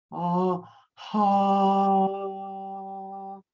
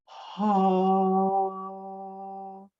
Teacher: And if you made a sound, it would be ah, ha. So you start with a ha, but it's a drawn out ah. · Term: heart sound